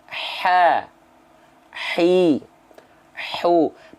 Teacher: ha kecil itu keluar dari tengah tenggorokan · Ain dan H kecil itu keluar dari tengah tenggorokan. Wastul halqi itu artinya adalah tengah tenggorokan. · Kalau H kecil tepat dilafalkan dari tengah tenggorokan, otomatis sifat hamsnya, hams itu mengalir nafas. Sifat hamsnya dengan otomatis akan mengeluarkan hembusan angin yang berbisik.